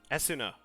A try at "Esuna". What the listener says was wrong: Esuna, the U is silent. There are a lot of kind of silent vowels in Japanese.